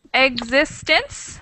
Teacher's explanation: that's 3 syllables, and the stress is on the second syllable